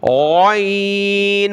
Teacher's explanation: غین، موٹے حروف میں سے ہے، اس کی جگہ آپ نے گاف نہیں پڑھنا